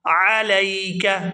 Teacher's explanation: عین کو حلق سے اچھی طرح سے ادا کریں گے